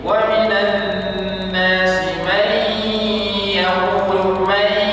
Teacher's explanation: Ada dengung dibaca nipis